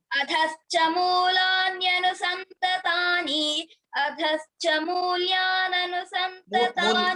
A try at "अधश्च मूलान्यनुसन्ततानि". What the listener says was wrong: మూల్యా లేదు మూల్యా లేదు అధశ్చ మూలాన్యనుసంతతాని